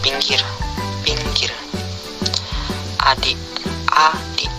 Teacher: I. Kriteria: vokal depan, tinggi bawah, tak bundar, tertutup